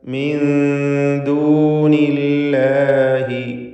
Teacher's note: അഫതഅബുദൂന മിൻ ദൂനില്ലാഹി, സാക്കിനത്താനൂനും ദാലും ശേഷം ദാലും, സാക്കിനത്താനൂനും ശേഷം ദാലും. ഇഖ്ഫാ ഹഖീഖി നൽകി നൂനിനെ മറച്ച് മണിക്കണം.